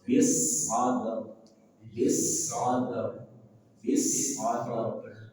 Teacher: Ba dia punya sifat huruf syiddah, maka tahan. Ini juga ra, maka dia punya hak setengah huruf.